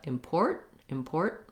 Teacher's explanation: lift my tongue towards the t but i don't release it not import but import import i'm lifting up and stopping the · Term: stop t